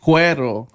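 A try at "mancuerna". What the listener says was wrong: You can't roll your R's either?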